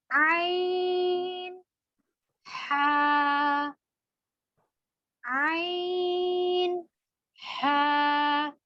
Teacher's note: یہ دونوں حروف حلق کے درمیان والے حصے سے ادا ہوتے ہیں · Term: وسط حلق